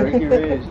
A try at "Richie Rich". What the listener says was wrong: Richie, not Ricky. That's Richie stupid.